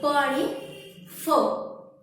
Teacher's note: ज्या व्यंजनांचा उच्चार करताना 2 ओठ मिटले जातात त्याला ओष्ठ्यव म्हणतात.